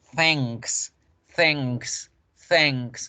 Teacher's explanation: las K se producen en el velo del paladar, se pronuncian acá, aquí en el velo, por eso es fácil hacer la palabra gracias.